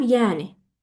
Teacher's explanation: Həm vurğu, həm uzanma hadisəsi sizdə eyni hecanın üzərinə düşür.